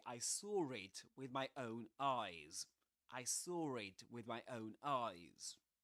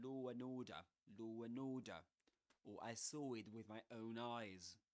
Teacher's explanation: The British here will insert this r sound. That's called an intrusive r